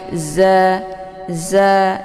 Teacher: Zai dibaca pendek ya, za. Ini huruf za ini sifatnya safir, jadi anginnya itu lebih jelas dan ditekan sedikit.